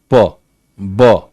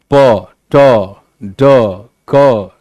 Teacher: Air is completely stopped for a brief period of time. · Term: stops